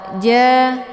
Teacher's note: ain sukun, letak posisinya di tenggorokan bagian tengah. Cara bacanya dialirkan. Ja, jadi jangan ditekan karena ain ini adalah sifatnya tawasud.